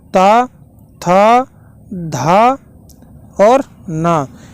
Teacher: ता, था, धा और ना, ये दंत में आता था